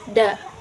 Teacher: Huruf dal ujung lidah dengan pangkal gigi seri atas.